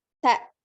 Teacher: Jadi pengucapannya ta, ada hamzah sukun di belakangnya. Ta, ya, disukunkan ke hamzah.